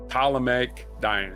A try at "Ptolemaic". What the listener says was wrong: the P is silent.